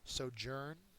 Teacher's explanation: it's a noun and a verb first syllables accented